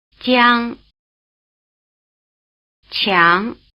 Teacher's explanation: unaspirated and strongly aspirated consonants with a strong E flavor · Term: palatal consonants